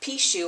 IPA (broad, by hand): piʃu